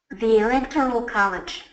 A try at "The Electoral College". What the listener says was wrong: Great job.